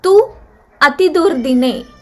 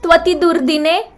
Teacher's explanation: Tu ends in u. The next word, the next pada begins with a vowel a. U is replaced by va.